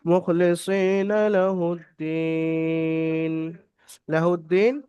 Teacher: ইয়া সাকিন ডান দিকে দালের নিচে জের আছে ইয়ামাদ্দাকে এক আলিফ পরিমাণ টান দিয়ে পড়তে হবে